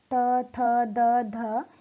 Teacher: इनका उच्चारण करते समय हमारी जीभ दांतों को स्पर्श करती है। जीभ का अगला भाग दांतों को छूता है। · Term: दंत व्यंजन